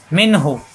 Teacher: নুন সাকিনের পরে হা স্পষ্ট হবে, গুন্না হবে না